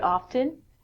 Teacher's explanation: I actually pronounce the t sound in it, but most people don't.